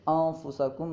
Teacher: انفسکم میں نون میں غنہ کرنا فا کی وجہ سے، جو کہ حرف اخفاء میں سے ہے۔